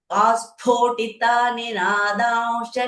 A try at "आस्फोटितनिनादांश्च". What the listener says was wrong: So asphotita, a ki matra is not there. Asphotita.